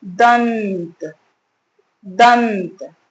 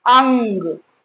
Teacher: जब अनुस्वार का प्रयोग कर रहे हैं तो नाक से अधिक वायु निकलती है। सांस जो हम लेते हैं तो जो वायु निकल रही है बोलते वक्त वो नाक से अधिक निकलती है और मुंह से कम वायु निकलती है।